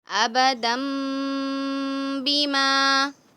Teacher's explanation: جی اس کو ابدن نہیں پڑھیں گے، ابدم. جی نون کی آواز میم میں چینج ہو جائے گی